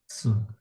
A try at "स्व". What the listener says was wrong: म्हणजे स व म्हणत नाही आपण. जर आपण स आणि व लिहिलं तर कसं म्हणून? स व. अर्ध स घेतलं म्हणून अर्धा उच्चार करायचा, स्व. ओके, स्व.